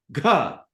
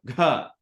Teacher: Voice Plus means G and there's a buzz in your throat